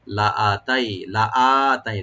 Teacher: লামে টান নাই, হামজাতে কিন্তু একালিফ টান আছে। লাআতাই, তাই এখানে হারফে লিন, নর সফট করে পড়বো আমরা ওপেন করে।